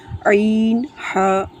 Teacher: عین، ہا حلق کے درمیان والے حصے سے ادا ہوتے ہیں